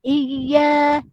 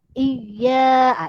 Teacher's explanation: Nabar ni adalah penekanan. Jadi penekanan pada huruf yang bertasjid. Contoh iya kita tekan.